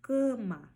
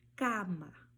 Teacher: quando a letra A estiver próxima de uma consoante nasal, como M ou N, você não vai nasalizar esse som como fazemos no português. No português eu falo cama, no espanhol eu falo cama, ok?